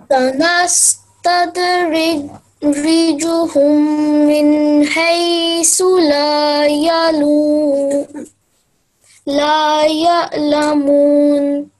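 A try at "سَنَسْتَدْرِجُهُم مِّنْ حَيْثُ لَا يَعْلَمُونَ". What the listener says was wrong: Okay, you have tried your best to recite, but there was one big word. You broke that word and started afterwards. You took breath in between. I know that because of your age, maybe you have not big breath, this time.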